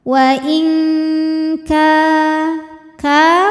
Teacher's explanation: Wal hikmata wa in, berikutnya ada hukum ikhfa ab'ad karena ada nun sukun menghadapi huruf kaf, maka nun sukun dibunyikan samar disertai dengung. Dengungnya lebih besar karena kaf makhrajnya jauh dari nun